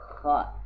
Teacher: kha ini adalah huruf khalqi bagian atas, tenggorokan bagian atas